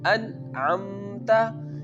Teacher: we have to pronounce the Noon sound very clearly without taking it from nose, because I already told you that when Noon Saakin or Tanween comes before throat letters, Izhaar happens.